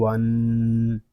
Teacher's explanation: یہاں نون مشدد ہے، اس پہ غنہ کریں گے